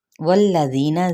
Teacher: ذی پہ مد اصلی بالیا، نون پہ اخفائی حقیقی